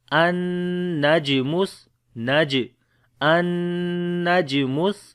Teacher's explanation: On the jim we make qalqala which is the weak qalqala